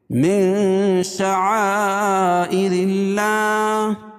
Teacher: من شعائر اللہ، اور یہ اخفاء حقیقی ہوگا کیونکہ نون ساکن کے بعد حروف اخفاء کے 15 حرفوں میں سے شین ہے تو یہاں ناک میں آواز کو چھپا کر پڑھیں گے. اور یہاں مد متصل ہے کیونکہ حروف مدہ کے بعد حمزہ جو اسی کلمے میں ہے تو مد متصل ہوگا.